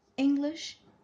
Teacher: this word English, it's ing and then lish, right? The stress is more on ing.